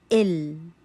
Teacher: इनकी आवाज ना पूरी बंद हो जाए जैसे शिद्दा में होती है और ना ज्यादा चलती रहे जैसे रखावा में चलती है बल्कि थोड़ी मिकदार में चलेगी